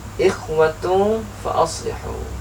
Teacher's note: antara tanwin dan fa tersamarkan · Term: ikhfa hakiki